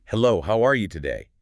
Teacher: Every word gets the same stress >> like a metronome.